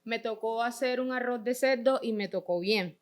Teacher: Entre los procesos o fenómenos más destacados encontramos la variación de las consonantes líquidas R y L implosivas, fenómeno popularmente conocido como el golpe cartagenero o el hablado golpeado